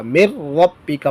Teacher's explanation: تو یہاں پر دیکھیں نون ساکن کے بعد رفع جر ملون میں سے را آیا ہے تو یہاں پر ادغام ہوگا لیکن غننے کے بغیر ہوگا. مر ربی کا پڑھیں گے مر نہیں پڑھیں گے بلکہ مر ربی کا.